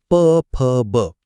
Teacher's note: दोन्ही ओढ एकत्र आले की प वर्गातले ओष्ठय ध्वनी